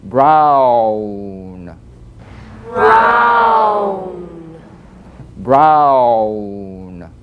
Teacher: if you move quickly from the widest to the smallest opening, ow, as in brown